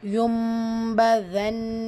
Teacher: பா இருக்கு கூடவே குட்டியா மீம் இருக்கா சோ நூன் புரட்டி மீமா ஓதணும் யக்லாபுடைய சட்டம் யும்பதன் இந்த இடத்துல கண்டிப்பா குன்னா செய்யணும்